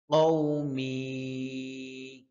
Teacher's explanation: কফ জিহ্বার গোড়া থেকে